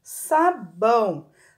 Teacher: a gente fala que é um som nasal porque o som sai pelo nariz